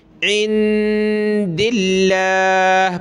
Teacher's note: لفظ اللہ سے پہلے دال پہ زیر ہے، عند اللہ پتلا کریں گے